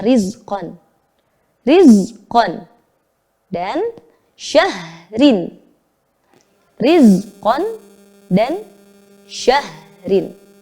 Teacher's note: ro yang dibaca tarqiq atau tipis